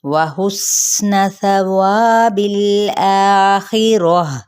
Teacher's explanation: ہم نے سین پہ سیٹی کو واضح کرنا ہے، نون کے حقہ کو لمبا نہیں کرنا